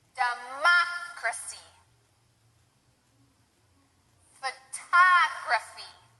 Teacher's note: four syllable words that also have this the accent or the stress on the second syllable